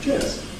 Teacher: cheers, meaning thank you, has a falling tone